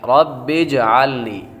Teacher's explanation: جیم بھی حروف قلقلہ میں سے ہے، اور جب حروف قلقلہ ساکن ہوں تو ان میں خوب قلقلہ ظاہر ہوگا